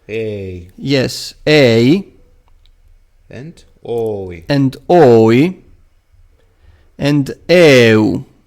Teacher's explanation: these last 4 diphthongs, they have the peculiarity that the first vowel is of long length